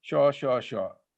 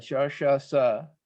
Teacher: in the Bengali pronunciation, the three sibilant sounds in Sanskrit are all pronounced the same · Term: the sha sound